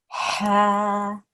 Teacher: From the middle of our throat, we're making the sound.